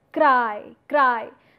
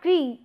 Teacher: So there is no consonant coming in between two vowels. The two vowels are coming in continuation, and the shift takes place from one vowel to the other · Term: diphthong